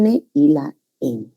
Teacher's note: Y en las nasales tenemos obstrucción en la cavidad bucal, pero el aire egresa por las fosas nasales